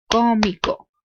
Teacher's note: you hear la fuerza de voz in la antepenúltima sílaba